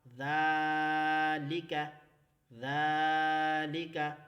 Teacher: زال کو ہم نے پڑھتے وقت زبان کو باہر نکال کر دانتوں کے اوپر رکھ کر ہم نے اسے ادا کرنا ہے